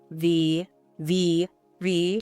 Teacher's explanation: You will feel a strong vibration on your lip. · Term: V sound